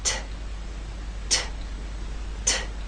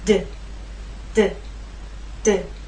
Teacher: There is more air released. There's a puff, a strong puff with the T. That strong puff is not present with the D.